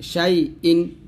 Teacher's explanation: সিন ইয়া জবর শাই, হামজা দুই জের ইন, শাই ইন, হামজা দুই জের ইন, এটা হামজাটা হলকে শুরু থেকে উচ্চারণ করতে হবে যেন আইনের মতো উচ্চারণ না হয়ে যায়